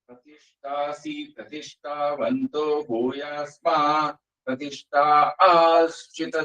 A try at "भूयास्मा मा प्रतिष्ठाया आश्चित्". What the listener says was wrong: भूयास्मा च இன்னொரு மகார விட்டாங்க भूयास्मा मा प्रतिष्ठा